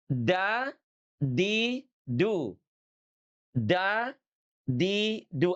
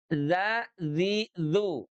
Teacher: ujung lidah kita ini nempel ke gusi, bukan ke gigi. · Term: huruf da